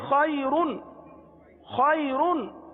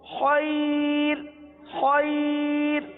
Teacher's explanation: را ساکن سے پہلے یا ساکنہ، را کو باریک پڑھیں گے · جی ہاں را کو پر پڑھیں گے، لیکن اگر ہم نے کر دیا وقف خیر، خیر، تو اب را کو کیا پڑھیں گے؟ باریک پڑھیں گے